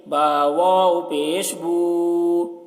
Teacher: با الٹا پیش بو، با واو پیش بو، اس کو بھی کھینچ رہے ہیں کیونکہ واو مدہ ہے، واو ساکن سے پہلے پیش ہے، واو مدہ کو ایک الف کے برابر کھینچیں گے